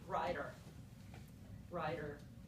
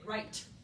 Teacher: So we don't actually go t, t, t, or d, d, d when we make that sound. Instead, we don't really whack the back of our teeth or that ridge behind our teeth with our tongue in a really sharp way. We get lazy and we just go flap, flap.